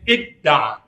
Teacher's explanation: Dal dan ta melebur menjadi id tanya hilang.